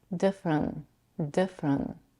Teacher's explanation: she also drops the final T which often happens when the t comes after an N